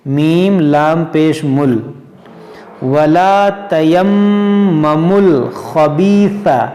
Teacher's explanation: یہ جو میم پیش ہے، میم پیش مو، اس کو جو ہے ہم اس لام سے ملا کر پڑھیں گے